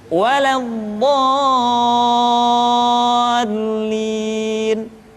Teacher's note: Dha dibaca panjang, suaranya tidak diayunkan karena setelah tanda panjang diikuti oleh huruf yang bertasydid.